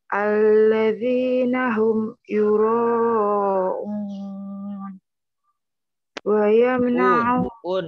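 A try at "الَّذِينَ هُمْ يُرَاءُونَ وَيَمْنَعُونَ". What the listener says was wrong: Itu bentar, itu hamzah bukan ain. Coba diulang.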